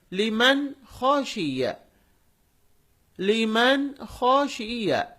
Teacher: نون ساکن ہے، اس کی آواز کو ہم ظاہر کر کے پڑھ رہے ہیں